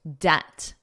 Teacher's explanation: Now notice the B is totally silent in the word debt. You don't hear it at all. Debt. And it's that eh, eh, eh, debt.